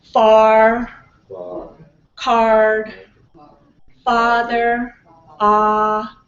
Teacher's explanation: your mouth is open your tongue is low but the back is a little bit up